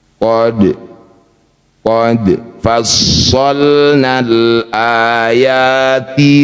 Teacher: Dal sukun di tengah bacaan disebut qalqalah sugra. Pantulkan dal. Pantulannya kecil saja. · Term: qalqalah sugro